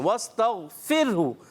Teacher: غین کی ادائیگی کیا کریں گے؟ پر کر کے. قلقلہ نہیں کریں گے. واستغفرہ را باریک, را ساکن سے پہلے زیر, اور ہا جو ہے اس میں اس کی ادائیگی کلیئر ہونی چاہیے.